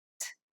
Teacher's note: The sound of ทอทหาร when it's an initial letter is t, like the T in the word top. There should be a puff of air coming out of your mouth when you make this sound.